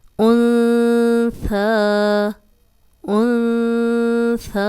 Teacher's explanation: 2 حرکات لمبا کریں گے، کھڑا زبر ہے. نون ساکن کے بعد ان 8 حروف میں سے سا نہیں ہے، ہم غنہ کریں.